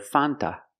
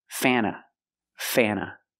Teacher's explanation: when you have NT between vowels, you don't really hear the T.